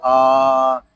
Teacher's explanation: یہاں حمزہ کو ایک الف تک کھینچ کر پڑھیں گے کیونکہ یہاں پہ کھڑا زبر آ رہا ہے۔